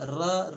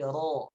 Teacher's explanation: ro dibaca tafkhim, ditebalkan ro-nya. Tidak re, tidak, tapi ro, ya.